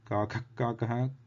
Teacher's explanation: So this is a Jihvamuliya originating in the base or the root of the tongue